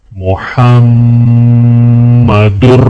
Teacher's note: میم پر غنہ کریں گے، غنہ یعنی ناک میں آواز